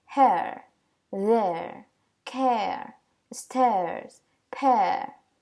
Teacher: recuerden que esa E invertida casi no suena, entonces esta terminaría siendo como una E